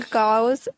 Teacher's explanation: cows with a raised vowel